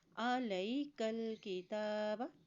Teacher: تا کے اوپر کھڑی زبر ہے اس لیے اس کو ایک حرکت لمبا بھی ادا کریں گے